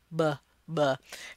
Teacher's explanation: you close your lips and stop the sound completely when you're producing it, and then release the sound. / b/ /b/ You can see the line representing stopping, and then the curve representing the lip movement. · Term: stop sounds